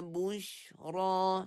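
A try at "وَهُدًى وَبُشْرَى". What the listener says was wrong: Masuk separuh je, jangan bunyi penuh.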